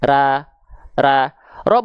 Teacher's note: terdengar masih vokal A itu berarti pangkal lidahnya belum naik tapi kalau teman-teman dengar dia berubah menjadi vokal o maka dia pangkal lidahnya naik bibirnya Enggak berubah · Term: pangkal lidah naik